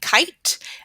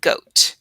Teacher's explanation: These sounds are called throat sounds. To make them, your mouth is open and the back of the tongue touches the back of the mouth near the throat. They are also stop sounds. · The k sound is unvoiced, so you should not feel a vibration. The g sound is voiced, so you should feel a vibration.